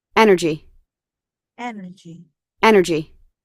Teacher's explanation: stresnya yang strong, itu yang awal